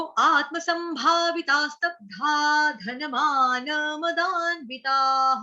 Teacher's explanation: और विसर्ग का उच्चारण हा से होगा